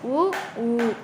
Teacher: இதழ்களை குவிப்பதால் பிறக்கும் எழுத்துக்கள்